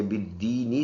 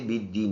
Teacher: یہ زیر وقف کی وجہ سے سائلنٹ کر دیں گے، بالدینی سے بالدین بن جائے گا